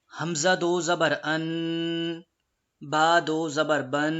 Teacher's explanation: میں ناک میں آواز لے کے جا رہا ہوں، اسی چیز کو غنہ کہتے ہیں